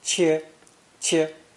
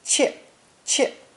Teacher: pronounced first tone, 切, 切, or fourth tone, 切, 切